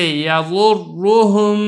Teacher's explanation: چوتھی صورت دیکھیں، را مشدد ہو اور اس کے اوپر پیش ہو، جیسے یضرہم، را کے اوپر تشدید ہے، اس کے اوپر پیش ہے تو اس کو پر کر کے پڑھنا ہے